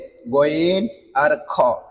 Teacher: হলকের শেষ থেকে দুইটা হরফ উচ্চারণ হয়, গইন আর খ।